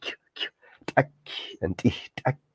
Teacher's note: So the K in this language is very fronted. It's almost like a k, k sound.